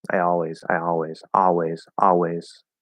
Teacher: if you just do ah and drop the l i guess it's okay